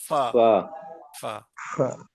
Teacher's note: ऊपर वाले दो दांतों का सिरा और नीचे के हंठ का अंदरूनी हिस्सा मिले तो क्या अदा होता है? फ अदा होता है।